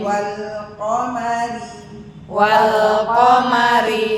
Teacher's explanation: qo berasa pangkal lidahnya nempel dulu nempel baru masuk harakatnya